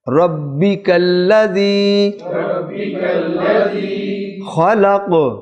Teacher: وقف میں قاف سائلنٹ ہوگا تو قاف جب سائلنٹ ہوا تو قلقلہ آ گیا